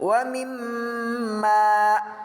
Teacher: Hukum bacaan gunnah musyaddada adalah apabila ada nun mim mati, mim bertasjid dibaca dengan berdengung kira-kira 2 harokat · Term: gunnah musyaddah